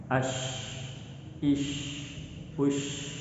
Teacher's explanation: Hams artinya suara samar yang disebabkan karena banyak nafas yang keluar ketika menyebutkan huruf shin. Berbeda dengan huruf jim, shin ini memiliki sifat yang namanya hams meskipun mereka satu makhraj.